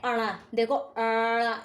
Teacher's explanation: अणा बोलने के लिए जीभ को फोल्ड करते हैं और हवा नाक से छोड़ी जाती है, नाक से, इसलिए इसे अनुनासिक व्यंजन कहते हैं।